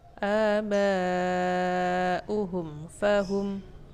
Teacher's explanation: jadi mim matinya jelas dan juga fa-nya jelas dan tanpa dibaca dengan dengung. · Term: idhar syafawi